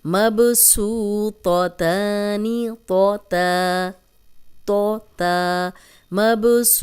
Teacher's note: تو موٹا ہے اور تا باریک ہے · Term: ملتے جلتے حروف